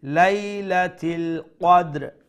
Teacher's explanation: make sure you pronounce the qaf with the fullest sound because it's from the full mouth letters